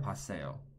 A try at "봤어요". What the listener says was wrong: But the pronunciation, he's not saying poa, he's just saying pa. There's no o, it's not poasoyo, it's not poasoyo, it's pasoyo. 봤어요, right? 봤어요.